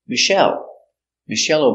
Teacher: the name Michelle comes from French so we pronounce it Michelle Accent on the second syllable